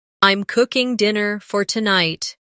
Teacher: The stress is on cooking and tonight.